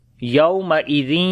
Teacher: واو یہاں پر لین ہے، نرم پڑھیں گے